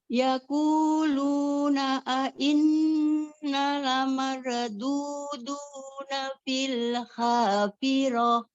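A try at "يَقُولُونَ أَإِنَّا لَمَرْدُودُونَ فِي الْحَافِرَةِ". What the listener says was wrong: Nah, Umi baca inna, nanya itu terlalu cepat. Sementara itu ada matobi alif. Alif sebelumnya fathah. Inna, gitu ya. Yaquluna inna lamarududuna fil hafirah. Inna lamarduduna fil hafirah. Inna lamardudun. Inna lamarududun.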